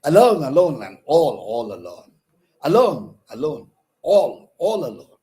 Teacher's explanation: Two unaccented syllables, two unstressed syllables followed by accented syllable to give the impression of moving fast, swift, quick movement. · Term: anapest